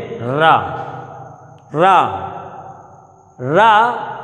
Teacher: जीव लुंठित सी हो रही है, फड़फड़ा सी रही है, रा, रा, जीव लुंठित हो रही है, लुढ़क सी रही है, तो रा बोलने पर जीव का लुंठित होना ही ये लुंठित वर्ण कहलाता है।